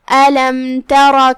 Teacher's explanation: کلمت ترا یہاں حرف را ہے اور اس پہ زبر ہے. را کا حکم ہے تفخیم، تو ہم اسے بھاری آواز میں پڑھیں گے